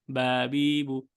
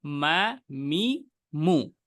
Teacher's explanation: বায়ে কোনো ধরনের প্রেশার নেই, কিন্তু মিমের ক্ষেত্রে প্রেশার আছে। বায়ের ক্ষেত্রে খুব ইজি থাকবে মুখটা, বা বি বু, কিন্তু মা মি মু, এই প্রেশারের জায়গাটা যদি আপনার মাথায় থাকে, আপনি তখন অটোমেটিক শুকনা অংশ নেবেন, কারণ ভিজা অংশে প্রেশার দেওয়া যায় না।